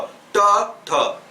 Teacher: ट वर्ग का उच्चारण स्थान क्या होगा, मूर्धा होगा।